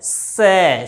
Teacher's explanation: सीधी ध्वनि दांतों से टकराती है